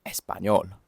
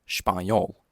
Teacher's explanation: That was how it's pronounced in Spanish. Whereas in Portuguese, that initial e sound is reduced to almost nothing. Something like spayol. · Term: vowel reduction